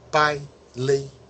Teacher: ele é no final das palavras naturalmente é pronunciado como um I breve